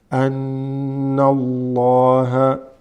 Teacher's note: Noon, fatha with a shadda makes it ghunna.